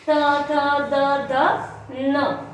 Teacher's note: इसे दंतव्य इसलिए कहते हैं क्योंकि जो जीवा है वो दांतों पे टच कर रही है।